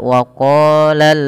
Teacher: Hati-hati dalam membaca qaf, dipanjangkan 2 harakat dan huruf qaf itu salah satu huruf yang tebal, huruf isti'la. Qa ya, qa pangkal lidah kita angkat, dia menebal. Bukan hanya sekedar waqa ya, tapi waqala.